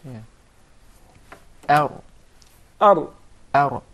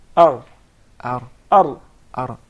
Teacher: The tip of the tongue, not the middle of the tongue, not the sides of the tongue, just the tip, the top tip of the tongue, striking or hitting slightly the gum. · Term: ra